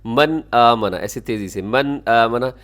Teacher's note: نون ساکن کے بعد آمنہ کی شروع میں حمزہ ہے، پھر آپ یہاں اظہار کیجیے گا